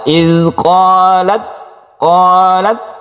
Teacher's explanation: ketika kita membaca tak yang bersukun ini, kita berhembus napas sedikit sehingga muncullah suara s tapi sedikit ya. Iz qalat, qalat sedikit saja. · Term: hamas